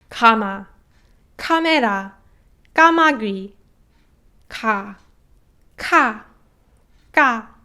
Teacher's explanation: So you can hear that double 기억 is more high pitched than the rest of the two